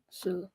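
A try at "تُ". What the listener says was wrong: tu. It's a ta.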